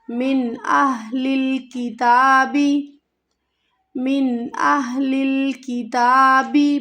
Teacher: یہ ہا جو ہے سینے سے ادا ہوگا، بھاری ہا ہے، اس کو ہمیں گلے سے نہیں ادا کرنا۔